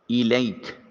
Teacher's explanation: کاف بریک ہے، اس کو بریک ادا کریں گے، موٹی آواز منہ سے نہ نکلنے پائے